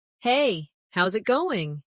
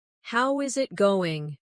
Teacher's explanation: A native speaker would say, "Hey, how's it going?" Notice that they don't always say every word slowly and clearly. Instead, how is it going becomes how's it going? The is disappears and the final G in going often softens. This is called connected speech.